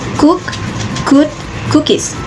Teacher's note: The voicing is voiceless. The place is velar. The manner is plosive